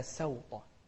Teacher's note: السين المفتوحة في كلمة سوطة، كثير من الناس يخطئ فيها يقول صوطة